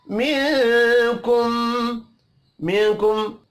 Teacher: नून साकिन के बाद काफ है, इख्फा हकीकी होगा